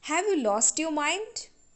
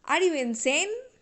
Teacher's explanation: rising tone is used while making criticism when we criticize someone or something we always use rising tone